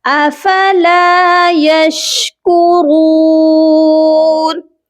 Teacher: را کو موٹا کر کے پڑھیں گے اور ایک الف کی مقدار لمبا بھی کریں گے کیونکہ اس کے ساتھ واو مدہ ہے.